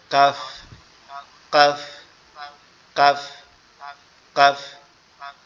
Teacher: জিহ্বার মধ্যকান উপরের তালুর সঙ্গে লাগবে, অর্থাৎ গোড়ার থেকে একটু সামনে উপরের তালুর সঙ্গে লাগবে, লেগে আওয়াজ হবে কাফ, কাফ, কাফ, কাফ।